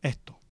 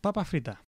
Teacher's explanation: Chilean Spanish is known for aspiration of the sound s when it occurs before a consonant or at the end of a word. For example, esto, meaning this, becomes esto.